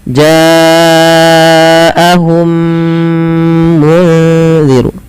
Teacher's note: Maka langkahnya adalah memasukkan mim pertama kepada mim kedua dan ditahan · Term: Idam Mimi, idgham mimi